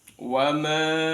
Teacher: dibaca panjang sepanjang 5 harokat. Itu namanya bacaan mad jaiz munfasil.